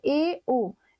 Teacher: संवृत स्थिति से कुछ अधिक खुलता है। अर्थात मुंह आधे से कम खुलता है। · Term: अर्ध संवृत